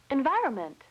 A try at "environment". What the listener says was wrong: You left out an N, not environment. The word is environment.